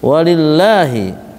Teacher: Inna gun musyaddah na matbi mun ikhfa hakiki tadhirun madarid lisukun walillahi tarkik ya lillah lamnya tipis